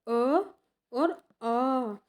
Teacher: हम बोलेंगे कंठ है। अ और आ का जो उच्चारण होता है वो किससे होता है? वो गले से होता है